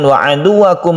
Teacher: mim mati bertemu dengan waw kita sebut dengan izhar syafawi, dibacanya jelas. Syafawi artinya bibir, makhraj dari mim itu ada di bibir.